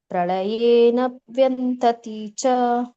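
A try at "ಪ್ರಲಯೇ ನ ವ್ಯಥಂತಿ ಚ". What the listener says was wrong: ಇಲ್ಲ ವ್ಯಕ್ಕೆ ಅನುನಾಸಕ ಇಲ್ಲ ಮಾತಾಜಿ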